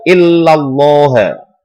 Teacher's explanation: Tafkhim artinya adalah tebal, yaitu illallah, karena ada fathah sebelum lafaz Allah didahului dengan huruf fathah. Karena ada fathah sebelum lafaz jalalah Allah, cara membacanya adalah ditebalkan. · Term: lam tafkhim